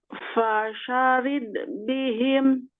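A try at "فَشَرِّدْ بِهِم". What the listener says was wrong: Itu ro-nya pakai tasydid. Coba lagi.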